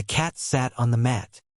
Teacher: the A in cat is pronounced more openly than in other English accents.